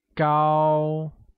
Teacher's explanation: tall becomes go and carries a high level tone